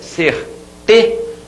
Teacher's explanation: você demora mais a voz aqui nessa sílaba que é a penúltima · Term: paroxítona